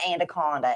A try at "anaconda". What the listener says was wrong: You added a D where there's not a D. Anaconda. Anaconda. No, you said anda. There's no D there. Anaconda. She's adding a D to the anaconda.